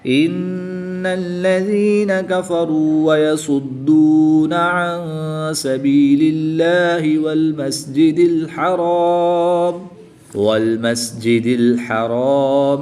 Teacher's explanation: دال حروف قلقلہ میں سے ہے اور جب حروف قلقلہ مشدد ہوں تو ان میں قلقلہ خوب جماؤں کے ساتھ کریں گے۔ اس کو قلقلہ کبریٰ بھی کہتے ہیں۔